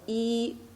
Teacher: the E is the first tone, which we say is the flat tone